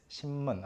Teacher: Your mouth position, your mouth shape, tongue position is already geared toward saying m, the next consonant that comes up.